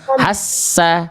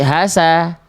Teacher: Berarti yang ditekan-nya esnya jangan jangan ditekan jangan ditahan jangan ditahan jangan hassa tapi hasa